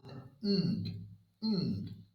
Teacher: the back of the tongue is in exactly the same position as the k and g pressed against the soft palate. But this time, we do not need to release the tongue. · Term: soft palate sound ng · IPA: /ŋ/